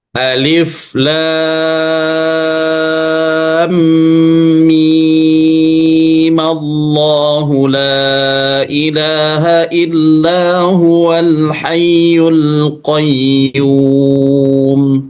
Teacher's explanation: Jadi dia tetap dipanjangkan sepanjang 6 harokat, khusus huruf mimnya.